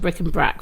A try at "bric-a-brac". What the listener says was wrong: Bric-a-brac. It's not brick and brac. No, it's bric-a-brac. Not bring her back. Bric-a-brac. Brick. Brack. No, it's correct English terminology.